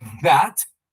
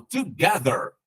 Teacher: vibração [Música] porque o som ele é oriundo da letra Z como se fosse a nossa letra Z no português porém com a língua entre os dentes e utilizando a voz vai ter vibração nas pregas vocais por isso ele é tratado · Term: som vozeado